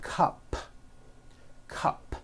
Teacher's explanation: it ends with an unvoiced P